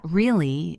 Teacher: If I say it with a rising tone really it means I am surprised or doubtful. If I say it flat really it might sound sarcastic.